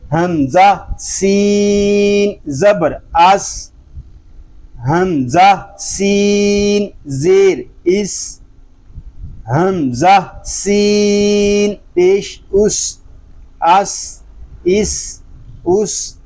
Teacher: اس کو سکون کے ساتھ ادا کریں گے اور اس میں سیٹی کی آواز بھی آئے گی۔